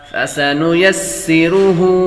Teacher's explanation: سین حروف صفیرہ میں سے ہے، سیٹی کی آواز آئے گی